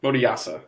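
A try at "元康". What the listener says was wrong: Yeah, Moriyasu. There's a U at the end.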